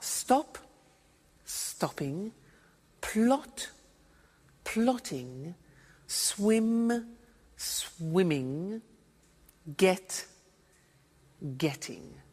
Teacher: when there is a double consonant we don't hear it in the pronunciation